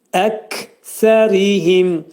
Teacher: Ri incə oxunacaq, tərqiq oxunacaq. Çünki ra hərfindən sonra i gəlib.